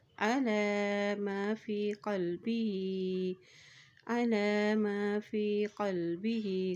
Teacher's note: لام کے اوپر کھڑی زبر ہے تو اس کو ایک حرکت لمبا ادا کریں گے۔